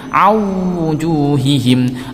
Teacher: nun sukunnya dimasukkan ke huruf wawu dengan disertai dengung. Dimasukkan itu artinya tidak usah dibaca. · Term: idgham bi gunnah